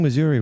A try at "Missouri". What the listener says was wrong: You had a Y in there. It's like Missouri. It's like a Russian.